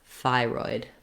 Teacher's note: it's pretty much straightforward the way it's spelled but know that the thigh is long and the roid is shorter thyroid that's because it has first syllable stress the second syllable